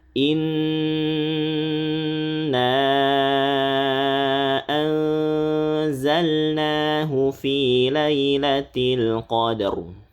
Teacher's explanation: Nun sukun bertemu zai. Ini tipis ikhfanya.